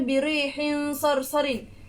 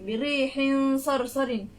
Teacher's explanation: Dia ada dengung sedikit tapi tak kuat sangat